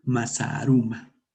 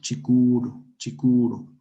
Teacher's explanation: Entonces ahí ocurre una contracción de las vocales y se pronuncia con el alargamiento vocálico.